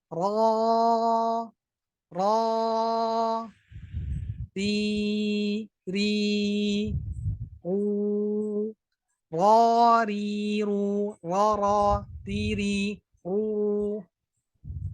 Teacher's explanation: Jadi lidahnya diangkat belakangnya.